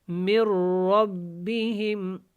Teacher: میم کو را کے ساتھ ملایا اور نون کو بیچ میں نہیں پڑھا کیونکہ نون جو ہے اس کے اوپر جزم ہے، آگے شد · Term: ادغام